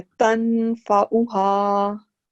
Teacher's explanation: हल्का सा नून को साथ मिलाएं और देखें नाक में गूंज आ रही है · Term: गुन्ना